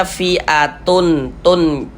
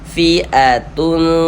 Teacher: bunyi tanwinnya ini jangan kita baca fi'atun tun jelas gitu jangan, tapi disamarkan.